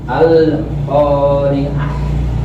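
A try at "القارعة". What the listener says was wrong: Jangan sampai putus antara lam sama qafnya. Al-qari'ah.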